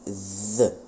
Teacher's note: Vous mettez votre langue entre vos dents et vous faites vibrer vos cordes vocales.